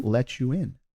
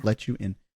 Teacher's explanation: So again, more interesting connected speech here in let you in, because as I said before, you're going to have a T sound at the end of a word and a Y, a word starting with a Y letter. Then you very often will hear in American English that becoming a CH sound.